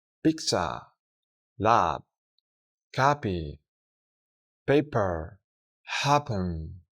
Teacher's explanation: se suelta algo más de aire al pronunciarla cuando se encuentra al inicio de una sílaba acentuada de una palabra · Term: P sound